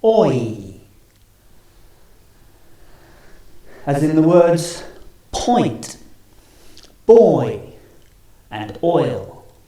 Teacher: we're going from the right all the way to the left going from rounded lips to unrounded starting on all and finishing on the E